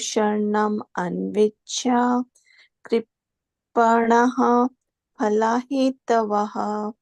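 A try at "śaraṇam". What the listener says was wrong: It is not śaranam. It is śaranam. The ra is full here. The ra is full. So śaranam.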